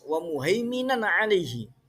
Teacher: Nan alaihi dibaca jelas karena di situ ada tajwidnya mengandung idhar halki, ada tanwin bertemu ain, dibaca jelas